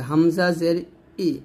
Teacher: সাবধান জের উচ্চারণ বাংলায় একারে হবে না যেমন ই এরকম মানে হবে না ই হবে হামজা জের ই